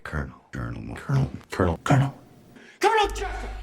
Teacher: It was only years later when I found out that the reason why I can't make it the same is because there is no L there. There is no L because in the word colonel there is an R sound. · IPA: ˈkɜːɹnəl